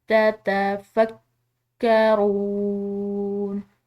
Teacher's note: یہاں پر واو مدہ ہے تو اس کی وجہ سے ہم نے واو کو ایک الف کے برابر کھنچاؤ دیا ہے